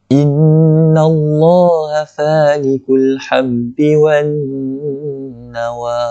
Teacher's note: Nun yang bertanda syaddah ini berbaris fathah. Jadi lam pada lafzul jalalah itu akan dibaca secara tebal. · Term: ditebalkan